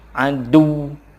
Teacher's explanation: Tetapi harus ada tekanannya untuk menunjukkan bahwa ujungnya itu ada tasydid